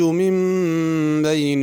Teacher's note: میم نون کے اوپر جو میم لکھی ہے میم پڑھنی ہے اور غنہ بھی کرنا ہے۔